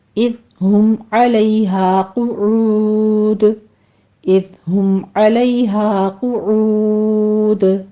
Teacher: آخر پر مدارس وقفی ہے، اس کو 6 حرکتوں برابر لمبا کر کے آخر پر قلقلہ کر لیں گے · قعود میں قوف پر پڑھتے ہوئے ضمہ ہے اوپر، ہونٹوں کو گول کر لیجئے. عین بھی وسط حلق سے ادا کریں گے، ہونٹوں کو گول کر لیجئے.